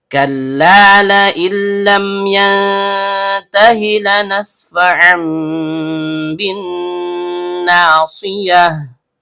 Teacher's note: Karena nunnya sukun bertemu dengan huruf lam yang keluar dari ujung lidah bertemu dengan langit-langit bagian depan, maka terjadi hukum bacaan idgham bila gunnah. Bunyi nun sukunnya dilebur ke huruf lam tanpa dengung.